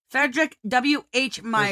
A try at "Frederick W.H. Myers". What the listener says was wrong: There's an R in there, you know. No, you said Frederick.